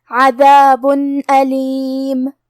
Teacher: پھر حرف الالف آتا ہے کلمت علیم، یہاں بھی حکم ہے اظہار، تو ہم تنوین ظاہر کریں گے اور یہ حکم کو بغیر غنہ سے ادا کریں گے · ہم حرف المیم کو ظاہر کریں گے اور بغیر غنہ سے یہ حکم کو ادا کریں گے. کلمت عذاب میں حرف العین کی ادائیگی حلق کے درمیان والے حصے سے ہے. آخری میں با پہ تنوین پیش ہے.